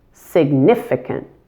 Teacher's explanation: You just need to make sure that you stress the middle syllable, significant, and relax all the I's in the word. They should all sound like I, significant.